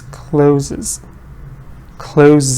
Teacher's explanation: you get an extra syllable when you add the s